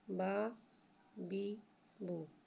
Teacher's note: با کو ایک الف یعنی 2 حرکات کے برابر کھینچ کے پڑھتے ہیں۔ با زبر با، با زیر بی، با پیش بو، با بی بو۔